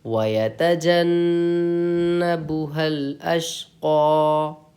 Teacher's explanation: یہاں نون پہ آپ کو غنہ کرنا ہے کیونکہ نون اور میم پر تشدید ہو تو غنہ ہوگا